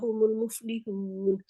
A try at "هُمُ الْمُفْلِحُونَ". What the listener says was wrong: هم المفلحون، اپنے نون کے مخرج میں رہے، ہون نہیں ہے، ہون، ہوں،